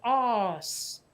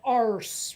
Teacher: think is why we say ass instead of arse here because the ar sound in britain comes out like an ah